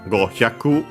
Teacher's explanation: the accent stays on the ku